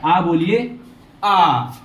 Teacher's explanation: विवृत मतलब जिसमें मुंह पूरा खुलता हो, उसे क्या कहते हैं, विवृत स्वर।